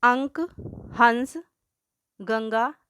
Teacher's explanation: इनके उच्चारण में हवा केवल नाक से निकलती है। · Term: अनुस्वार